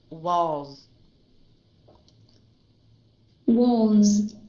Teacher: listen to the durations of the Z